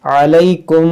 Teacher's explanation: میم ساکن کے بعد دوسری میم ہے تو یہاں پر ادغام شفوی کا قاعدہ لگے گا، یعنی یہاں پر غنہ کریں گے